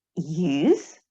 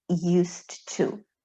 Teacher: We pronounce Z in the word use, but S in the phrase used to.